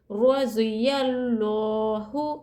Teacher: پر لفظ اللہ کے لام سے پہلے حرکت زبر ہے تو ہم اللہ کے لام کو پر پڑھیں گے، پر یعنی موٹا منہ بھر کے پڑھیں گے